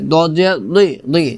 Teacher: এখানে দত মোটা করে উচ্চারণ করতে হবে, দজদি। জিহ্বার গোড়ার সাইড উপরের মারি দাঁতের গোড়ার সঙ্গে লাগিয়ে উচ্চারণ করতে হবে